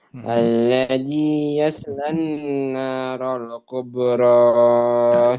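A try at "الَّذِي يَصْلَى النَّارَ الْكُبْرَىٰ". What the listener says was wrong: Lan kurang tahan sebentar. Alladzi yaslan naral kubra.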